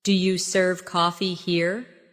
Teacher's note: In casual speech, do you becomes dia?